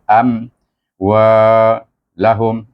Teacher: Izhar syafawi itu baca satu harakat aja.